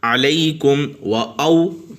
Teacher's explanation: اور لئی پہ جو ہے یہ واو لین ہوگا، نارمل طریقے سے پڑھیں گے، اس کو لمبا نہیں کریں گے